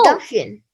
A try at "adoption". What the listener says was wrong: Adopt. You got to close your mouth because you got to have that P sound. Option. You're not closing your mouth. It's not adoption. Watch what happens. Look at my lips. Adoption. I didn't close my mouth. So I got not adopt.